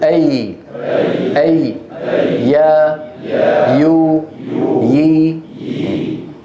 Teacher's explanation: مخرج الياء غير الماديه من وسط اللسان مع وسط الحنك الاعلى لاحظوا الطريق كيف مفتوح ما ينقفل المخرج الياء يقولوا اي اي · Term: الياء غير المادية